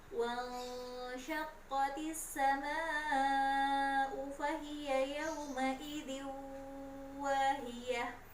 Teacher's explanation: itu jangan lupa nun bertemu syin, ikhfa tahan 3 ketukan. · Kemudian ada bacaan panjang di kata as-sama, panjangkan 5 ketukan. Kemudian di terakhir ada idgham gunnah, ada tanwin bertemu dengan waw, tahan 3 ketukan juga.